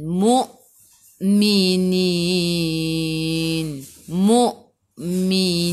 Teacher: Hamzah ada baris sukun. Kita kena baca dengan putus.